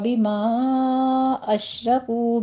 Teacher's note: بما میں مد منفصل جائز ہے 4 کاؤنٹ کرنا ہے ، اشرکو میں شین پر تفشی کریں گے، را مفخم پڑھی